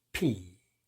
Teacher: 그래서 오, 그 다음에 P 이건 아래 윗 입술을 딱 붙인 채 터트리면서 벌리면서 내는 소리입니다